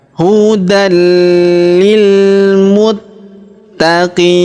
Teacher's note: Terdapat tanda tasydid di sini, maka huruf ta kita tahan dan kita tekan · huruf ta kita tahan dan kita tekan karena terdapat tanda tasydid ya.